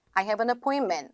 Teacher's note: I have an appointment 하고 T 사운드를 내지 않는다. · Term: 포인트 유형